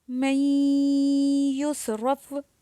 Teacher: اب یہاں پہ دیکھیے نون ساکن ہے اور اس کے بعد یا آ رہا ہے تو یہاں پہ ہم ادغام بھی کریں گے اور غنہ بھی کریں گے